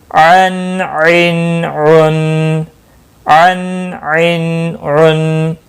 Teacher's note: وسط حلق سے عین نکلتا ہے